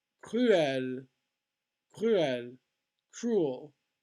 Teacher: Separate two consecutive vowels in these words. So cruel, two separate vowel sounds.